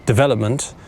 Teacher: the stress on this word needs to go on the second syllable. You need to say development like this. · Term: stressed syllable